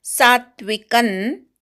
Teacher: सा पूर्ण म्हणायचा नंतर अर्धा त ऐकू आला पाहिजे